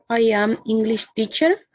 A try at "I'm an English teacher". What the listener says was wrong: Acabas de pronunciar I am, como si no estuviera contraído. Cuando está contraído, pronunciamos am. I'm an English teacher.